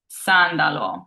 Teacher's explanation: It's a singular S, but it's not sandwiched by vowels, so it's a true S sound. And last we have sandalo, which means sandal, and it is followed by a vowel, but there's no vowel before it, so it's a true S sound.